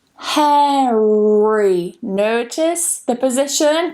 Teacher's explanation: Now the third and final rule is when we do actually pronounce it, and we pronounce the R when we have an R and then we have a vowel coming after it